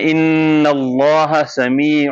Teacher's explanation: Arabic لہجہ یہ ہے کہ آپ پہلے نون بول کے میم پہ چینج کریں. تو وہ پڑھتے ہیں ان اللہ سمیع, یعنی اگر آپ ہونٹوں کو تھوڑا سا پیپر گیپ چھوڑ دیں گے نا, تھوڑا سا گیپ چھوڑ دیں گے, تو وہ خود بخود نون سے میم پر آواز چلی جائے گی.